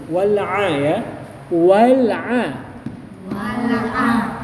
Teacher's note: wal a ada di tengah-tengah tenggorokan